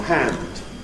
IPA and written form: hænd (hand)